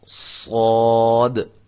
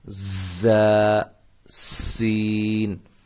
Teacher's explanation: صاد کی جو سیٹی ہے یہ موٹی ہوگی، زا اور سین ان کی سیٹیاں جو ہیں وہ سیٹی کی جو آواز ہے وہ باریک ہوگی